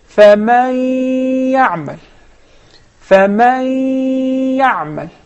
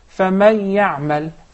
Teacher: So when I hide, when I merge the noon into the ya, it will remain some of its traces, its sound, which is the ghunna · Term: idgham with ghunna